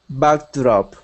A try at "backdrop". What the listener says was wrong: Do you hear you saying backdrop? Don't let your tongue move. Make it backdrop.